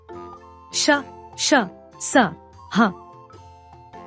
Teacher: वायु तेज गति से मुंह के भागों से रगड़ खाती हुई बाहर निकलती है, जिससे ऊष्मा, गर्मी उत्पन्न होती है। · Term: ऊष्म व्यंजन